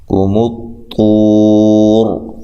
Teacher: یہاں طوا کو خوب موٹا کرنا ہے اور یہاں الف و مدہ ہے تو وقف کی صورت میں مد کر سکتے ہیں.